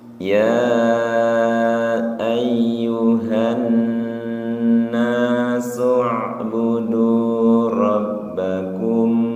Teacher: Ya panjangnya 5, na 2, tu 2.